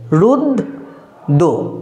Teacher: একইভাবে ধরো রফালা দিয়ে যদি উচ্চারণ করি রুদ্র, রয় হস্য দয় রফালা রুদ্র, দেখো দয়ের সঙ্গে যে রফালাটা আছে রফালার উচ্চারণটা হচ্ছে না, কিন্তু রফালার জন্য দটা দুবার উচ্চারণ হয়ে যাচ্ছে